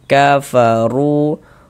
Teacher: huruf ro dibaca tebal, dibaca tapkhim. Sehingganya pengkalisan kita naik terangkat ke atas ketika kita mengucapkannya. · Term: tafkhim